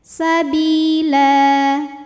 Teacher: cara bacanya panjang lamnya dua harakat saja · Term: Mad iwad